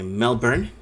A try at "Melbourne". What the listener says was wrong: No, there's no R. It's just Melbourne. It says that there's an R in there, but it's not. That's not how we say it.